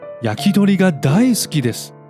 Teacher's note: Well, the second possible reason has to do with an interesting phenomenon in Tokyo dialect Japanese called 遅下がり, where the pitch doesn't immediately drop after the last high-pitch mora, creating a parabolic effect. This emphasizes the word and sometimes makes it sound cuter.